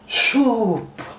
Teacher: U sound is extended here. S-W-O-O-P. So this double O represents Dirgho in Bengali. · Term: long U